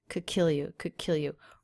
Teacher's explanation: Really stressing the word kill, that could kill you.